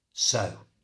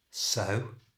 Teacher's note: Remember to get a good W sound on the end of the O and keep the whole word so short.